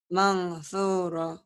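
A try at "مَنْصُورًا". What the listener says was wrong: Mansura salah. Harusnya jadi mansura. Karena harus dibaca ikhfa. Nun mati ketemu sa, bukan sin. Sa. Kalau shin ada giginya, itu gak ada giginya. Sa. Sa ya. Nun mati ketemu sa. Ikhfa. Nun mati ketemu sa. Mansura jadi mansura.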